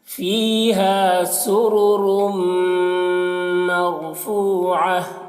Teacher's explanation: فی یہاں پر یا مدہ ہے اور ہا میں الف مدہ ہے، تو دونوں کو ایک الف کے برابر کھینچیں گے